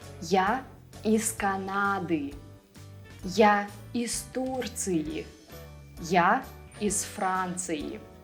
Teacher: z will become voiceless because it's followed by a voiceless consonant